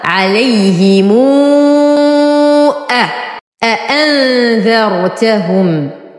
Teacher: قام ورش بصلة ميم الجمع الساكنة المتطرفة بواو مدية مشبعة تمد بمقدار 6 حركات إذا أتى بعدها همز في الكلمة الثانية، ويلحق بالمد الجائز المنفصل ويمد مثله.